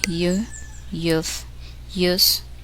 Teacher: When the sound y is followed by the vowel sound u, the combination is exactly the same as the vowel sound u.